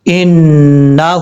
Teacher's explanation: نون کے اوپر شد ہے، غنہ کریں گے ایک الف کی مقدار · الٹا پیش کا مطلب اس کو ایک الف کی مقدار لمبا کر کے پڑھیں گے۔